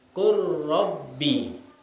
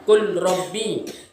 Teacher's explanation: Jadi tidak membacanya qul rabbi, tetapi qur rabbi. Huruf lam itu masuk ke dalam huruf ra. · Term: idgham mutaqaribain